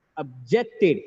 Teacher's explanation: Objected, here stress is on the second syllable, OB becomes weaker, it becomes objected.